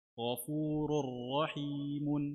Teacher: راء تنوين بالضم مدغم في راء مفتوحة بغير غنة